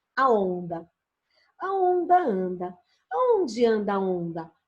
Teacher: E se você olhar, você vai falar, professora, também tem o D ali, né? O N, para ajudar na nasalização ali do onda, né? Junta-se ali, então, para dar essa vogal nasal.